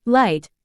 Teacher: the sides of the tongue are lowered allowing the air to flow over them this results in a distinctive look sound that is characterized by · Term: lateral